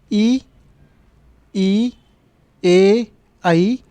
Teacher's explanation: जिस स्वर के उच्चारण में आपके जीभ का अगला हिस्सा लगता है वह अग्र स्वर